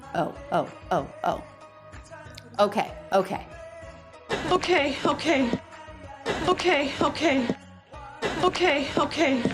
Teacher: that is an O diphthong in that first syllable so make sure you're moving your lips a little bit